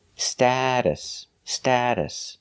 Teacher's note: the short a sound like apple and black cat sta status the T in the middle is pronounced like a fast D